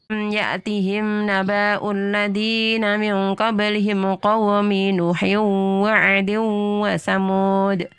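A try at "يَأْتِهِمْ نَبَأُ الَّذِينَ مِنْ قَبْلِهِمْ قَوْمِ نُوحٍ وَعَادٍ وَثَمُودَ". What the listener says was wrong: Ya, stop lagi. Nah, di sini kena lagi Bu di panjang pendeknya, perhatikan ya. Naba'ul ladzina. Di situ banyak pendek. Karena itu bukan ketemu alif ya. Jadi bukan naba'u.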